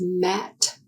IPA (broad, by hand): m